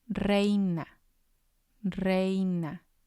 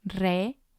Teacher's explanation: the stress is going to be on the E because that's the strong vowel